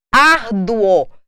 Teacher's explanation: Olha o som forte. Olha a tonicidade no O.